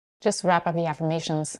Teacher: notice that she says it with a lower pitch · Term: parenthetical expression